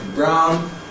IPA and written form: braʊn (brown)